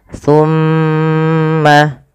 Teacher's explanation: Pada lafal summa ditahan dulu. Lafal mimnya ditahan. Jangan langsung dilepaskan.